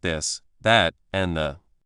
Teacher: For this sound, do the same with your tongue, but also make your voice vibrate. You can feel a buzz in your throat. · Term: th sound